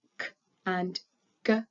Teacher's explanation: these sounds are made at the back of the mouth with not much move movement from the lips or the teeth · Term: back sounds